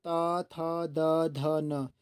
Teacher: जितने भी आप ता वर्ग के शब्द बोलोगे तो सभी को बोलने समय जो हमारी जीभ है वो आप कहीं ना कहीं देखोगे कि दांतों से कहीं ना कहीं टच हो रही है।